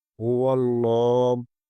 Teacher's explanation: لام کو بھی پر پڑھیں گے اور لام کے اوپر کھڑی زبر ہے، اسے ایک الف کے برابر کھینچ کر پڑھیں گے۔